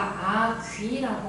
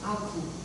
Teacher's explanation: 입술이 둥글었다가 다시 앞모음으로 가는 과정